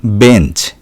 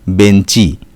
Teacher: এই ইংরেজি শব্দটিকে আমরা বাংলায় গ্রহণ করার সময় বলছি বেঞ্চি অর্থাৎ শব্দের শেষে হ্রস্ব ই স্বরধ্বনির আগমন ঘটছে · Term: অন্তঃসরাগম